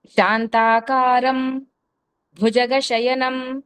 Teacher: శాంతాకారం సున్నా తర్వాత అనుస్వరం సున్నా ఉంది, తర్వాత భా ఉంది, పఫ బభ భా కాబట్టి అమ్ అని పలికాము · ప ఫ బ భ మ వీటి ముందు వచ్చిన అనుస్వరాన్ని దాని యొక్క అనునాసికమైనటువంటి అమ్మనే పలుకుతాము